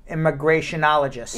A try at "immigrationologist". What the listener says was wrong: Nope, but that's not how she said. She put a little OL.